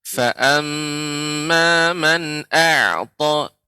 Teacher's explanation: ketika mengucapkan a'ta jangan sampai juga ainnya menjadi tebal. Tapi dibuka.